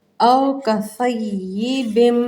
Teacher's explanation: او کصیب، دیکھیں میم پہ تشدید ہے، او کصیب، میں نے ہونٹوں کو بند کیا، غنّے کا اظہار ہو گیا